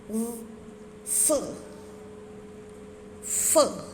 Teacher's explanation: होंठ, दांत, ऊपर के दांत नीचे के होंठ आपस में मिलते हैं, जैसे फ, फ।